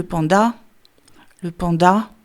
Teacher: Et et si vous deviez accentuer quelque chose, ce serait plutôt une sorte d'allongement final à la fin du mot